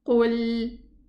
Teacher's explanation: Okay, the qaf is elevated while the lam is lowered. I need to round my lips to pronounce the qaf, qu, and then return my lips back to pronounce the lam.